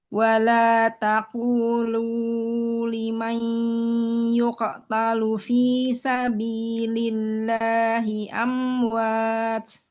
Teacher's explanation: Nah, lamnya tadi kurang panjang. Domah ketemu wau dua harakat